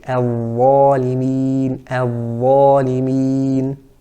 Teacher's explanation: And the difference, the tongue, the back is elevated, the middle is cupped or concave, and the epiglottis moves back and narrows that area